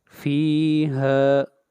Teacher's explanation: ہا کو کھینچ کر پڑھیں گے 1 الف کے برابر